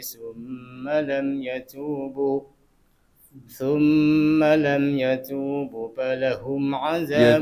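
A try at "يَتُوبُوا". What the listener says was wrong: Yatubu. Itu bunya panjang dikit.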